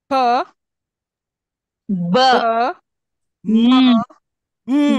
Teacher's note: sounds which are performed using both upper and lower lips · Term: bilabials